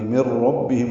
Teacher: ادغام کامل ہے، نون نہیں پڑھیں گے، میم کو را سے ملا دیں گے، من ربہم را پر پڑھیں گے۔